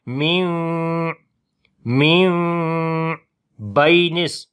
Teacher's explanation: نون کو میم کے اندر بدلا تو میم کی آواز یہاں پر چھپا کر پڑھیں گے، اور ہونٹوں کو تو آپس میں ملائیں گے لیکن نرمی کے ساتھ پڑھیں گے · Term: اقلاب